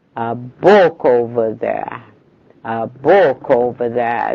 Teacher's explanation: شوف بقى السنتنس الموفمنت بتاعت الجملة عاملة a fall هنا. The tone is falling.